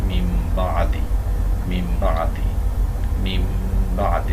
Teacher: এখানে নুন সাকিনের পরে যদি বা আসে তাহলে নুনকে পাল্টে মিম ধরে পড়তে হয়। মিম বা আদি, মিম বা আদি, মিম বা আদি, এবং গুন্না সহকারে পড়তে হয়। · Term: ইকলাব বদলে পড়া